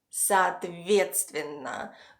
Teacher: The stress falls on the first “e”, which gives a regular sound “e”. · The second “o”, which is right before the stressed syllable, is pronounced as a short “a”. · the first “o” is farther from the stressed syllable, so it´s more reduced and should be pronounced as an English “schwa” sound · There is also one more unstressed “o” at the very end of the word, which is also pronounced as a short “a” sound. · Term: short Russian “и”